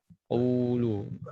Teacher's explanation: Lam pada dasarnya dia tidak tebal, tipis ya.